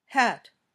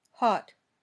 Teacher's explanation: when you say ah your tongue is pushed forward in your mouth when you say oh it's toward the back